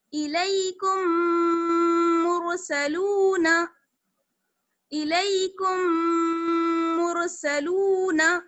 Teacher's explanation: یہ ہے ہمارا میم ساکن کا ادغام. ٹھیک ہے, دونوں میم کو ملا دیں گے غنے کے ساتھ